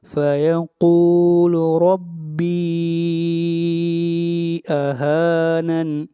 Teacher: ربی کے اوپر مد منفصل ہے، اس مد کو 3 الف کے برابر کھینچ کر پڑھیں گے۔